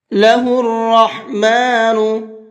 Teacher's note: را کو پر کر کے پڑھیں گے اور حا کو حلق سے نکال کر کے پڑھیں گے